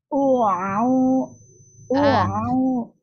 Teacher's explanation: akhirnya ini di bagian akhir kurang mengalir ke rongga mulut, masih ke hidung